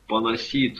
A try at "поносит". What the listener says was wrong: Не поносить, Мягкого знака нету, поносить.